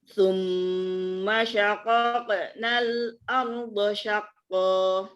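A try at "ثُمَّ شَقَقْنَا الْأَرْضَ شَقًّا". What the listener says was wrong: Tapi jangan dipanjangin Ustazah, jangan syaqaqa. Kok itu udah panjang. Langsung mantul.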